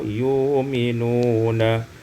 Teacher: Pada ayat yang ke-65, yu'minuna, ibdalul hamzati wawan, ditukar hamzah dengan waw